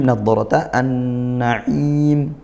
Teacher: ini idgham syamsiyah bertemu huruf nun huruf syamsiyah langsung dibaca masuk ke nun ditasydidkan sehingga nunnya juga gun ghunah dibaca dengung Naim ini mad arid ini sukun dibaca panjang boleh satu dua atau tiga alif.